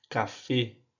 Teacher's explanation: As letras E O são pronunciadas com o som fechado e forte, mesmo se elas vierem acentuadas, porque o acento em espanhol ele só vem para mostrar que é a sílaba mais forte, a sílaba tônica.